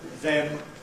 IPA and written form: ðem (them)